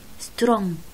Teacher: الجي لا تلفظ، تلفظ بغنة long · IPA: / η /